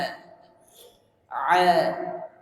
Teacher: bedakan antara a dan a a makhraj huruf Ain di mana makhraj huruf Ain ada di tenggurukan tengah dia berteman dengan ha